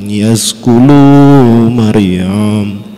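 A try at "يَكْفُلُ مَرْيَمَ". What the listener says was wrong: yakfulu pakai kaf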